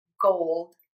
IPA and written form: goʊld (GOLD)